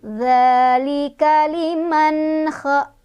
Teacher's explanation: Di sini ada izhar, ada nun sukun ketemu sama kha. Cara bacanya nun sukunnya dibaca jelas ya.